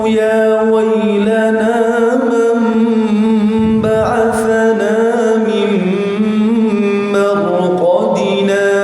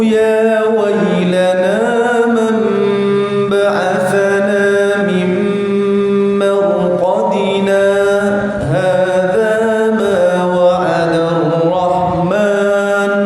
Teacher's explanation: Jadi berhentinya sekitar dua harakat dan tanpa bernafas. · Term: bacaan sakta